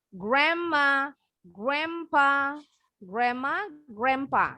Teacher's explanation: D-nya ini dua-duanya silent, nggak bunyi memang. Tapi ini huruf N-nya berubah bunyi jadi M ya.